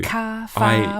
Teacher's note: we only articulate R at the beginnings and in the middles of words. We don't do it on the ends.